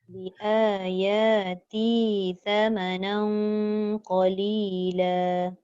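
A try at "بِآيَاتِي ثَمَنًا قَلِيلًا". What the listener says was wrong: Panjang. Bi ayati thamanan. Ti tu panjang.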